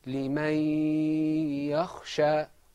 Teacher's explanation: the noon sakina in limen and the ya became one stressed letter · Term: idgham